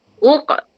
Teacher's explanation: Sifat dia kalau mati ataupun sukun, dia kena ada sifat qalqalah di samping dia tebal